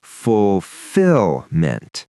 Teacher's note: So the stress falls on the second syllable, fulfillment. And that T at the end is soft, but it's there.